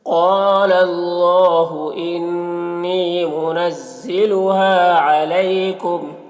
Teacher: یہاں پر الف مدہ ہے ایک الف کے برابر کھینچیں گے، علیکم یالین ہے اسے نرم آواز کے ساتھ جلد پڑھیں گے